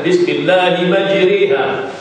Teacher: Bahawa dijadikan alif terlebih hampir kepada ya dan fathah terlebih hampir kepada kasrah. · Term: imalah kubra